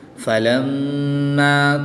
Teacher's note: میم مشدد میں ہمیشہ غنہ ہوتا ہے تو یہاں پر غنہ کر کے پڑھیں گے